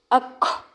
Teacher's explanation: کاف ساکن اور تا ساکن پر ہمس ہوگا